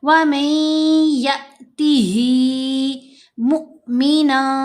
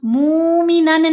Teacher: हमने या को हमज़ा साकिन से मिलाना है तो झटका देकर पढ़ना है। वमन यअतिही मुमिना, मूमिनन नहीं पढ़ना, ये वाव मद्दा नहीं है, ये हमज़ा साकिन है।